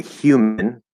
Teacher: the h is just air okay this is breath and it will take on the shape of the sound after it okay now in this case the sound after it isn't ooh · the y position okay like we're gonna say yi right but instead of having that voice come through for a y sound we're just gonna start with the breath that's it you're just doing a voiceless y okay this is why i call the h the voiceless vowel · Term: H sound